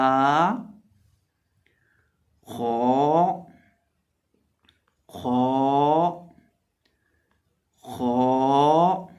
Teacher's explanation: को हम पुर करके पढ़ेंगे, मोटा करके पढ़ेंगे